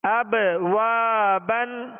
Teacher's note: قلقلہ کریں گے، آواز میں جنبش ہوگی ، اب وا بن، اور واو کے ساتھ الف مدہ ہے،